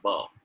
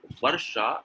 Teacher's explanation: When you say B, you touch your both lips. But when you say Varsha, you need to bite your lower lip.